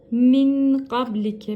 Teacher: nun sakinden sonra Gaf geldiği için ihva yapıyoruz yine Nunu tutuyoruz